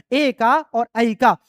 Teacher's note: आ का उच्चारण स्थान होता है कंठ और ई का होता है तालु। अ और ई के मिलने से ए बना है, इसलिए ए का उच्चारण स्थान हो जाएगा कंठ तालु। · अ और इ के मिलने से ए बना है। इसलिए ए का उच्चारण स्थान हो जाएगा कंठ तालु। उसी तरह से ऐ का भी उच्चारण स्थान कंठ तालु होगा।